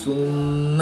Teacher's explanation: میم مشدد میں غنہ آنی کر کے پڑھیں گے